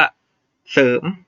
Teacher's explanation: รอเรือเป็นตัวตามไม่ต้องออกเสียงนี้นะครับ